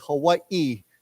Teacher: if you live in Hawaii, the proper way to say Hawaii is you pronounce the second I separately